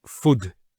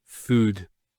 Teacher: So there's the elongation of the oo sound food